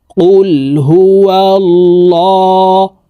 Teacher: খারা জবর ল এই লামকে ল অর্থাৎ মোটা ভাবে পড়তে হবে আল্লাহ শব্দের আগের হরফে জবর অথবা পেশ হইলে এই লামকে ল অর্থাৎ মোটা করিয়া পড়িতে হয়